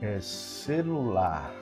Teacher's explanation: você vai notar que na palavra celular a sílaba tônica é a última